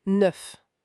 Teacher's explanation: Ce son E. C'est un peu comme dans 2, mais plus ouvert.